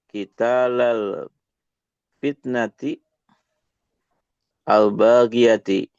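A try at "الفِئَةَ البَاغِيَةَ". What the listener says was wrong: Fi'ata. Bukan kita. Fi'ata.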